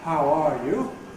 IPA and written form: haʊ ˈɑː ju (How are you?)